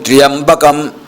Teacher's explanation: త్రయంబకం అన్నప్పుడు తకార రకార యకారాలు ఒకేసారి ఉచ్చరించాలి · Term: సంయుక్తాక్షరం